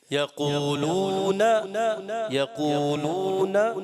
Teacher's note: یقولون نون کی زبر لمبی ہو گئی، یہ نہیں آپ نے لمبا کرنا